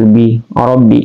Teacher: Ba adalah syafatain atau keluar di dua bibir, rabbi kan, tapi dia tasdid maka ditekan ya, rabbihim ya.